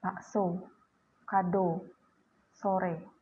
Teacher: Sementara itu vokal O dilafalkan dengan cara menarik lidah jauh ke belakang dan ke tengah disertai dengan menghembuskan udara keluar